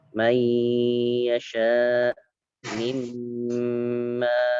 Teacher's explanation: yanmu itu diidghamkan atau dimasukkan kemudian ditahan selama 2 harakat ya. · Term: Idgham bi gunnah